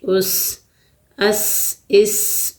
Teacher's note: سین کی آواز میں خوب سیٹی نکالنی ہے، سختی کرنی ہے